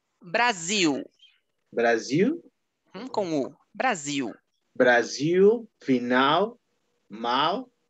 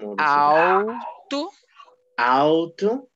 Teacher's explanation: a letra L quando está antes de uma consoante ou no final das palavras vai ter o som de u